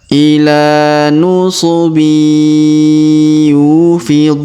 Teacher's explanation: Huruf yu kita panjangkan 2 harokat karena terdapat waw sukun di depan huruf yu.